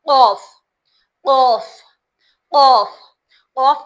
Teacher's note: कफ को मोटा मोटा पढ़ा जाता है। मुंह भर के आवाज आती है। कौफ बोलने में मुंह भर के आवाज आती है।